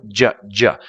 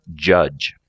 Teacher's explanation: The j is the sound in judge. You're going to start with a D sound and slide into a Z.